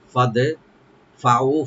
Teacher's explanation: ফা ওপেন রাখবেন, দালটাকে একটু কলকলা করতে হবে এখানে। ফাদে ফাউ, ফা ওপেন রেখে ও এখানে 3 আলিফ টানবেন মাদ্দে মুনফাসিল।